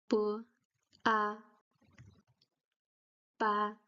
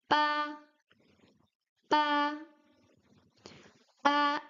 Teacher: You don't uh blow air out of your mouth, but the lips are really strong when you pronounce the B. You can hear that it's stronger than the English B. So the leaves have to close stronger to pronounce it. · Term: B sound